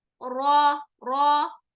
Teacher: अस्सिरात, सिरात, सिराता नहीं है, सिरातल लज़ीना, हम ऐसे नहीं पढ़ सकते, सिरातल लज़ीना, सूरह अल फातिहा पढ़ते हुए सिरातल, सिरातल, रा नहीं, रॉ, रॉ, आवाज में भारीपन होना चाहिए। और अब यहाँ रॉ आने की वजह से अलिफ को भी हमने क्या कर दिया, तफ़कीम कर दिया, अस्सिरात।